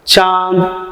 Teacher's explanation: तो इसका उच्चारण नाक और मुंह दोनों से होता है। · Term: अनुनासिक